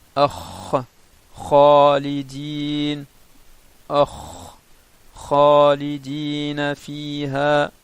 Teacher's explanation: Donc c'est les deux membres qui font pareil qui font sortir la lettre Kha. Donc c'est Jadr al-Lisan, la racine de la langue, et le palais mou. Sauf que le point de sortie du Kha est un peu plus haut.